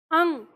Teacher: जब हम अनुस्वार का उच्चारण कर रहे हैं अंग, तो हम कंठ से आवाज निकाल के नाक में लेकर जा रहे हैं।